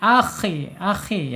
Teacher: Ketika sukun. Kemudian sifat yang lainnya yaitu mempunyai sifat istila'la ya. Terangkat ya lidahnya. Akhi. Akhi ya terangkat ini pangkal lidahnya terangkat.